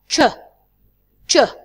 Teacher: Ch is a voiceless sound.